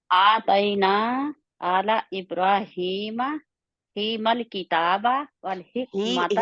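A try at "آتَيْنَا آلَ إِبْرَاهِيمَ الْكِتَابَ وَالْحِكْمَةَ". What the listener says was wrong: ही मल किताबा से नहीं शुरू करेंगे आप, इब्राहिमल, फिर दोबारा जाएंगे उधर। मल की इब्राहिम मल किताब। आतैना आला इब्राहिम मल किताब।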